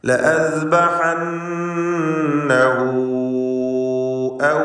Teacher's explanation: ലഅസ്ബഹന്നഹു 2 ഹർക്കത്തിൻ്റെ അളവിൽ മണിക്കുക. ഹാഉ ദ്വമീറിന് മദ്ദുസ്സിലത്തിൽ കുബ്ര എന്ന ദീർഘം നൽകണം. 4-5 ഹറക്കത്തിൻ്റെ അളവിൽ ദീർഘിപ്പിക്കുക. മദ് മുൻഫസിലിൻ്റെ വിധിയാണ്.